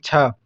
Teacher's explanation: तालव्य महाप्राण अघोष व्यंजन वर्ण